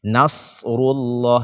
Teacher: yang tebal itu adalah shad, bukan nunnya